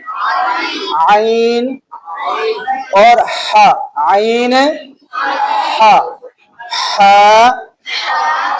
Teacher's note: मखरज number दो, आइन हा अदा होते हैं हल्क के उस हिस्सा से जो दरमियान वाला है।